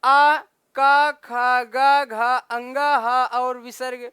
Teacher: आ का ख ग घ अंगा ह और विसर्ग का उच्चारण स्थान क्या होता है मित्रों? कंठ होता है।